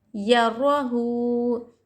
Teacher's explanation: الٹا پیش کو وہ مدہ کی طرح ایک الف کی مقدار کھینچ کر پڑھیں گے